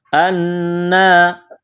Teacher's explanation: قلتم، قاف کو موٹا کرنا ہے۔ انا، نون مشدد ہے، آواز ناک میں چھپائیں گے، غنہ کریں گے، ایک الف کے برابر کھینچنا ہے، کڑا زبر ہے۔